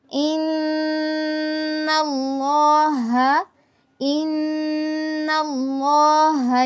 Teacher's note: تفخیم کرنی ہے، یعنی لفظ اللہ کو پر پڑھنا ہے